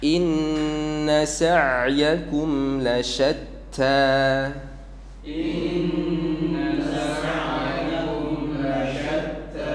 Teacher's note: Saya perhatikan di situ sa'yakum ada huruf ain berharakat sukun. Ya, huruf ain keluar dari tengah tenggorokan.